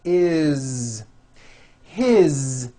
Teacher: all these words that I'm going to show you now are written with an S however they are all pronounced with a voiced Z